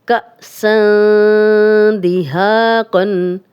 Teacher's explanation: تنوین کے بعد دال آ گیا تو یہاں بھی ہم غنہ کر رہے ہیں لیکن نون کی آواز کو تھوڑا چھپا کر، یہ اخفا کا رول ہے۔ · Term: اخفا والا غنہ